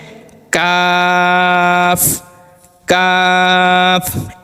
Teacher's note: সঙ্গে লাগিয়ে কফ পাঁচ নাম্বার মাখরাজ জিহ্বার গোড়া হতে একটু আগে বাড়িয়ে অর্থাৎ শুরু এবং মাঝখানে এর মধ্যবর্তী স্থান থেকে তার বরাবর উপরে তালুর সঙ্গে লাগিয়ে একটি হরফ উচ্চারিত হবে